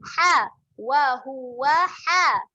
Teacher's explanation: Ha makhrajnya di tengah kerongkong. Jadi huruf ni kena tekan sedikit. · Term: huruf ha